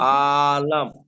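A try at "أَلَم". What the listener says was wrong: আ টান দিচ্ছেন কেন? হামজা যাবর আ, লাম মিম যাবর লাম, আলাম, পুরো সহজ। আবার টান দিচ্ছেন। আর এই আ টানটা কেন দিচ্ছেন সেটা আমাকে বলেন, কেন দিচ্ছেন?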